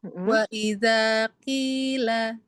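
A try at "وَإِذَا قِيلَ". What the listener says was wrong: Tebelnya, tanggal lidahnya boleh turunin.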